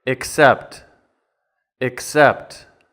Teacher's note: And the pronunciation is the short I, and then K, ick. And then the second and stressed syllable, sept.